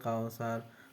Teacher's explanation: mad layin karena ada tanda baca fathah bertemu dengan huruf wawu mati, cara bacanya sekedar lunak dan lemas